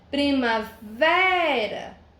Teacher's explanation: Sílaba tônica, o vé, também classifico como paroxítona.